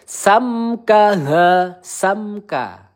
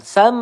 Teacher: mim sukun ya bertemu kaf. Izhar sfawi. Cukup kita baca dengan jelas tidak boleh kita panjangkan.